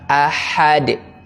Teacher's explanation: Sifatnya adalah mengalir nafas, atau dalam bahasa tajwidnya hams. Jadi harus ada nafas yang mengalir. Ya, dan suara yang mengalir, atau dalam bahasa tahsinnya rokhawah.